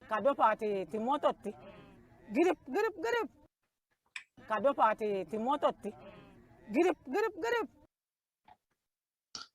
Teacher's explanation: of duplication where you have a striking rising pitch so that each time a word is repeated it's repeated at a higher and a higher pitch and since the pitch continues to get higher it goes way